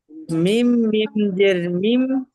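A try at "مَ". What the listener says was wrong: মিম, মিম জের নেই, মিমের উপরে জাবার আছে দেখেন। মাম, মিম,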